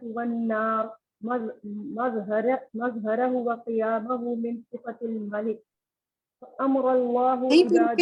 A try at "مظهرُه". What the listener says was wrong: دیکھیں مظہرہ نہیں ہے مظہرہ، ٹھیک ہے، را پر پیش ہے.